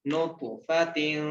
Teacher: پیش نط، فا زبر فا، نطفا، تا دو زیر تین، نطفتن، طا موٹا بھی پڑھا جائے گا اور طا پہ قلقلہ بھی کیا جائے گا